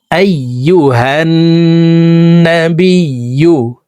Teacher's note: তো এই জবরওয়ালা হাটি তাসদিদওয়ালা নুনের সাথে 3 সেকেন্ড পরিমাণ গুন্নাহ করে পড়ব।